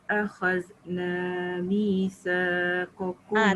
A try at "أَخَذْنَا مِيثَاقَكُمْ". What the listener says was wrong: Akhadna dengan misa tu jangan lebih. Allah tu jangan lebih.